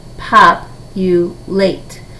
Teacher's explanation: the primary stress is going to be pop and that my secondary stress is going to be late